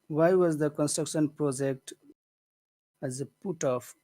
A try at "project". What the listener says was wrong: I wish you would make the vowel in project bigger. Project. Make it bigger.